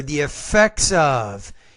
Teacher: the S here the this is the same thought group so the S needs to blend with the first vowel of the next word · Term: blending